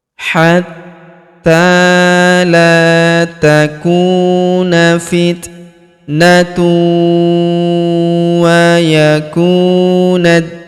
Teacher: Maka tanwin unnya melebur ke huruf wau yang berharakat tasydid. Kita tahan dan kita tekan serta kita dengungkan dua sampai harakat.